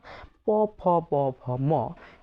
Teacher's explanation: উচ্চারণের সময় একদম স্পষ্টত দেখা যায় যে আমাদের ঠোট দুটোকে একসাথে করে তারপর উচ্চারণ করতে হয়। ঠোট ফাঁকা রেখে এ বর্ণগুলো উচ্চারণ করা যায় না।